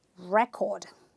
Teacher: it is a noun and therefore I don't say record I stress the first syllable